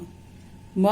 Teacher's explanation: म का उच्चारण स्थान ओष्ठ और नाम है ओष्ठ्य